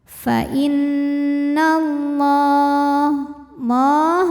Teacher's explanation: Kemudian ada hukum alif lam yang dinamakan dengan alif lam syamsiyah. Karena alif lam menghadapi huruf syamsiyah yaitu lam, maka alif lam tidak kita baca atau biasa disebut dengan idgham syamsi.